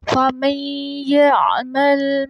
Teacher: فَمَن يَعْمَلْ جو ہے میم، اس کو ہم یا کے ساتھ ملائیں گے، نون بیچ میں سائلنٹ ہو جائے گا لیکن ہلکی سی اس کی آواز آئے گی، یہاں ادغام ہوگا میم کا یا کے ساتھ۔